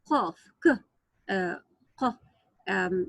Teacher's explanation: The articulation point of the deepest part of the tongue, 2 letters emitted from it, qaf and kaf. Well, qaf, it's like a heavy Q.